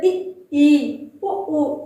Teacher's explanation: वे स्वर जिनके उच्चारण में मुंह बहुत कम खुलता है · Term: संवर्ध स्वर